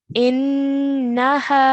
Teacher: we have to hold that nasal sound of the noon for 2 counts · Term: gunna sound